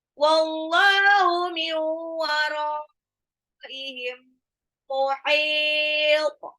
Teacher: Wallahu dan Allah, lamnya 2 harokat, matabi'i, min wara. Nun sukun ketemu waw itu idgham biguna ya. Tidak hanya dilebur tapi ditahan. Miu, jadi bukan cuma min wara, tapi miu wara, roknya itu sebetulnya matabi'i bertemu dengan hamzah dalam satu kata.